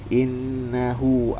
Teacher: Innahu sini terdapat hukum gunah yaitu bertasdid. Cara bacanya tahan dua harakat.